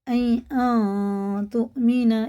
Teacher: یہ اخفا ہے، جتنے بھی بالکل کے یہ سب اخفا ہے، 1 الف کے برابر ناک میں لے جا کر چھپا کر، اخفا کی مقدار 1 الف ہے